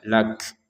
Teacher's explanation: Huruf kafnya kita beri nafas sedikit saja. Lak jadi nafas keluar ya untuk huruf kafnya.